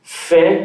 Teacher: Por isso que ele coloca essa observação aqui. Fé, porque esse epsilon ele tem som aberto, por isso que ele coloca fé.